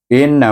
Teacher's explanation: Inna kita baca dengan wajibul gunnah 2 harakat, iaitu hamzah bertemu dengan nun yang bertasydid. Nun bertasydid mesti baca wajibul gunnah 2 harakat dengan dengung. Maksudnya wajib dengung 2 harakat.